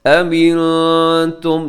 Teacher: نون ساکن کے بعد تا، یہاں ہوگا اخفا